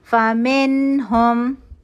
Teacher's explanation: 1 count کا natural غنہ ہوا، نون کے مخرج پہ جائیں گے اور نون کو پڑھیں گے۔ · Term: اظہار